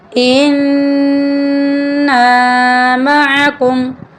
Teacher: यहाँ पर नून मुशद्दिद है, नून पर हम गुन्ना करेंगे।